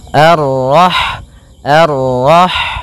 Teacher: Kemudian pada lafal rah di sini ada huruf ha yang berharakat sukun, dan sifat ha itu yang paling mencolok adalah sifat hamesnya, yaitu mengalirnya nafas ketika kita membacanya.